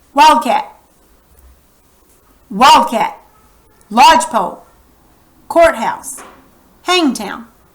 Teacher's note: the first word in the compound word always receives the primary accent